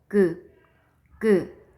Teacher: 혀의 뿌리 부분이 여린 입천장에 닿았다가 떨어지면서 나는 소리예요